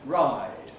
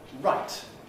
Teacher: Ride, that has a full length I. Right, that is, as we say, clipped, reduced in duration because of the t that follows